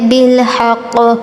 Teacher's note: قلقلہ کریں گے، ہلا کر پڑھیں گے